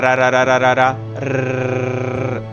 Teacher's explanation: It is produced in the alveolar ridge, the bumpy area just behind your upper front teeth, where your tongue taps. This is the alveolar ridge. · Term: flap T